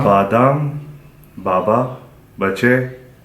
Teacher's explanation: So this is very similar to English, except for it's not aspirated. In English, sometimes we give it a little bit of extra air.